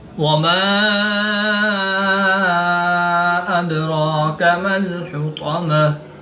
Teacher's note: دال ساکن ہے تو یہاں پر قلقلہ صغریٰ کر کے پڑھیں گے۔ · الف مدہ کے بعد حمزہ دوسرے کلمے میں ہے تو یہاں پر مد منفصل ہوگی، 2 سے 3 الف تک کھینچ کر پڑھیں گے۔